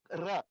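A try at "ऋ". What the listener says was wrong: It's not Ra, it's R, right? Kangaroo. Kangaroo. R, the longer vowel, because it's got that extra U to it.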